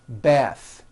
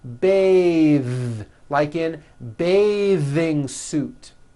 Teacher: The word bath is a noun with an unvoiced TH. Bath. But when you change it into a verb, to bathe, the vowel changes to an A sound and the TH is voiced.